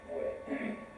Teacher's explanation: It's regularly sort of realized as W-E, way, diphthong, way. It's regularly and usually realized as a diphthong way in the standard speech of Seoul.